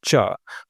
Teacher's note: आपका जो जीभ का अग्र भाग है आपकी जीभ का वो कहां छू रहा है? आपके तालु पे। तालु क्या होता है ना मैं आपको बताऊं हमारे मुख में दांत के पीछे से जो हिस्सा शुरू होता है और कंठ तक पीछे तक जाता है उस पूरे हिस्से को जो है आप तालु कहते हैं। · च वर्ग में क्या होगा? इसको नाम दिया है तालव्य व्यंजन।